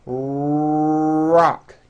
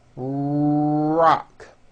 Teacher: notice how my lips are coming forward and my tongue moves back in my mouth, and I push out the R sound. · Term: American R sound